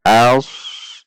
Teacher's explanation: Namun ini sad sehingga berbunyi als. Dengan menaikkan pangkal lidah pada huruf sad sukun sesuai dengan sifatnya. Als. Namun hati-hati bukan o.